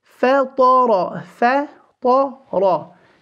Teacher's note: The fa will be empty, the ta will be full, and the ra holding fatha as well will be full.